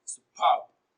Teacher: Superb is a bisyllabic adjective and it is stressed on the second syllable as superb. Superb is pronounced louder and longer.